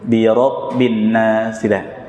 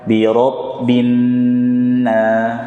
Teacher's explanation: Nun bertasydid dibaca dengan gunnah, ditahan. Jangan buru-buru.